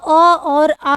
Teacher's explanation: जो आपका अ और आ है, ठीक है? इसका उच्चारण स्थान क्या है? तो कंठ है। क्या होगा? कंठ होगा।